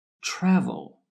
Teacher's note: Yes, the first syllable is stressed, the TRA, travel. The last syllable with L at the end is not stressed.